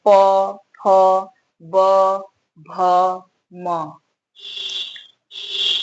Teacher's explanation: प वर्ग में आपका होंठ आता है, ओष्ठ, ओष्ठ कहते हैं, होंठ, होंठ स्पर्श करते हैं